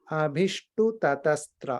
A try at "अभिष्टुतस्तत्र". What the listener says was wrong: No, Abhishtutas tatra. Yeah, I think you are saying tatas or something, right? Abhishtutas tatra.